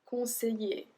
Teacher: Conseiller, conseiller. So we don't pronounce the L.